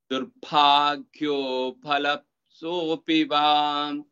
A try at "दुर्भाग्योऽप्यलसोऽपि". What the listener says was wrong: दुर्भाग्योप्य pa has also ya with it. दुर्भाग्योप्यलसोऽपि वा